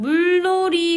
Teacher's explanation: 다시 유음화로 돌아가서 리을과 니은의 결합이 일어날 때 리을과 리을로 변화하고 있는 걸 확인할 수 있습니다